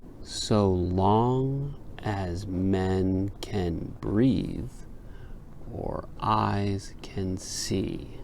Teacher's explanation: could you hear a little pause between breathe and or that little pause is called a cesura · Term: caesura